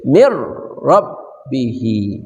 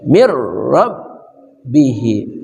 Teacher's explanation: Nun masukkan ke ra menjadi mirbihi